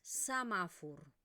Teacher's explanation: la E en posición átona se pronuncia con esta vocal neutra. Y la O se va a transformar en una U.